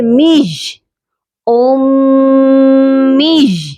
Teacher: یہاں میم مشدد ہے اور میم مشدد پر بھی لازمی غنہ ہوتا ہے، اسی لیے ہم نے اس کو حمزہ کے ساتھ ملایا ہے اور غنہ بھی کیا ہے.